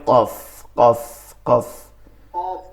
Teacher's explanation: জিব্বার গোড়া, তার বরাবর উপরের তালুর সঙ্গে লাগায়া উচ্চারণটা হবে ভারী আওয়াজে